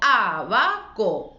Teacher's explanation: ¿Cuál digo más fuerte? La A del principio, la antepenúltima. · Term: esdrújulas